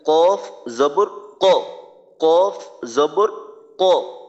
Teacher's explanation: কফ জিহ্বার গোড়া তার বরাবর উপরের তালুর সঙ্গে লাগাইয়া কফ জবর কফ কফ জবর কফ যেন বাংলা ক মতো না